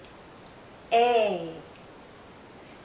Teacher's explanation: this is a long vowel sound a our mouth is opening more our jaw is lowering a this sound is also tense so you might be seeing